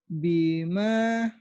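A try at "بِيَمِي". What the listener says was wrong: Biyami, ya bukan Bima, Biya. Kan ini Biyami. panjang minya doang. Yanya pendek, nggak ada pemanjang.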